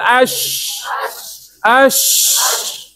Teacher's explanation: Lidah kita macam nak rapat dah tapi angin keluar. Sebab tu bunyi ada bunyi shh tu. Ya ni kena longgarkan sikit, jangan longgar sangat. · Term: shin